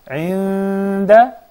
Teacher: عند, that's إخفاء with 2 counts, the غنة.